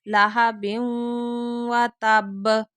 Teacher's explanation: تنوین کے بعد واو آ رہا ہے تو یہاں ادغام ہوگا، غنے کے ساتھ ادغام